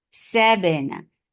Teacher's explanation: ba is majhura. So there is no flow of breath, and the qalqala should be very clear.